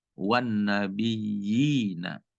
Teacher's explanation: huruf ya menempati bacaan mat sebab bertemu ya sukun dan harus dibaca panjangnya satu alif atau dua harokat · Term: mat tamkin